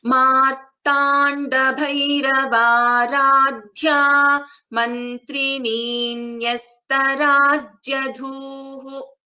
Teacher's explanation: So there are three Mahapranaksharas, Bha, Dha and Dhu, and then Visarga.